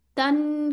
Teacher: गुन्ना आ रहा है, टू काउंट्स हैं। नून में एक्चुअली गुन्ना की सिफ्त होती है।